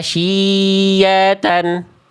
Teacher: Ya-nya tidak bertasydid, shin-nya kepanjangan terasanya.